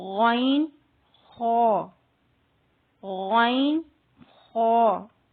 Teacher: ادنا حلق یعنی حلق کا سب سے اوپر والا حصہ جو منہ کی طرف ہے